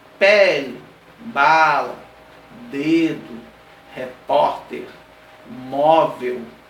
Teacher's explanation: são palavras que nós temos o posicionamento na penúltima sílaba, então eu chamo de paroxítona.